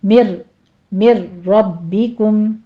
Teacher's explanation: نون ساکن کا قاعدہ ادغام بلا غنہ ہے، یہاں پہ آپ نے لمبا نہیں کرنا، جلدی پڑھنا ہے، نون کی ساؤنڈ بیچ میں نہیں لانی ہے